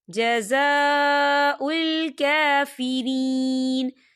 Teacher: دیکھیں جزا، یہاں خالی الف سے پہلے زبر ہے، یہاں پر الف مدہ بھی ہو رہا ہے اور اس پر مد بھی ہے، تو ہم اسے 4 حرکت کے برابر کھینچ کے پڑھیں گے